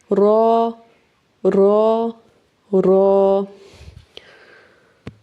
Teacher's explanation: और र के लिए हम जुबान की बैक साइड इस्तेमाल करेंगे। थोड़ा सा जुबान की जो नोक है उसको मोड़ के ऊपर लगाएंगे। बैक वाली साइड।